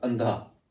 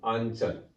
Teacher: जब अनुस्वार का उच्चारण होता है तो अनुस्वार के उच्चारण में जो हमारी श्वास है वो केवल नाक से निकलती है, और जब चंद्र बिंदु का उच्चारण होगा तो हमारी जो श्वास है वह नाक और मुंह दोनों से ही क्या है निकलती है। अनुस्वार का जब उच्चारण होता है तो वह क्या है तीव्र ध्वनि के साथ होता है, और चंद्र बिंदु का उच्चारण होता है तो वह क्या है धीमी ध्वनि के साथ होता है।